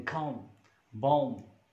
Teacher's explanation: Ba sound at the end of the word, when it comes after ma sound, m sound, this is phonological rule that this sound is not pronounced.